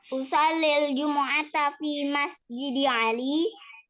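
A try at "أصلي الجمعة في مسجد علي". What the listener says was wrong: Ini intonasinya ya. Intonasinya nggak bertanya. Kalau Sholil Jumu'ata fi Masjid Ali itu bertanya, tapi datar aja. Sholil Jumu'ata fi Masjid Ali.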